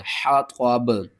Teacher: با کے نیچے جو زیر ہے اس کو آپ نے ختم کر دینا